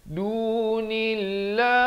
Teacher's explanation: lafz jalalah di sini dibaca nipis, jangan baca dunillah, itu tebal, salah.